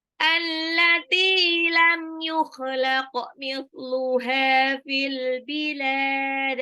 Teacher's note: Allati taknya 2 harokat mad tabi'i ya